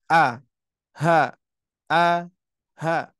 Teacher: keluar dari tenggorokan bagian pangkal ya paling bawah sama dengan Hamzah